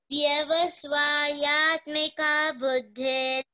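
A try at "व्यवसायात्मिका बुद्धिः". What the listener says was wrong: Very nice. But it is Vyavasa, not Vyavasya. Vyavasayatmika.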